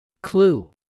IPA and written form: klu (clue)